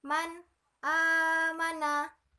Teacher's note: di mana ada nun mati bertemu dengan huruf hamzah yang berbentuk alif. Maka cara membacanya jelas ya. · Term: izhar